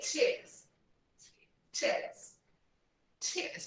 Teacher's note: Because British people, they never pronounce the R. Americans do. British people don't.